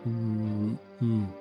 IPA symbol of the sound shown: u